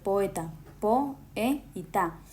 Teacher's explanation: se separan en diferentes sílabas al pronunciar, es decir, no forman un solo sonido, sino dos.